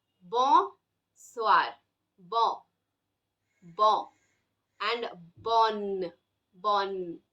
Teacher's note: when you say bon, your tongue doesn't touch anywhere.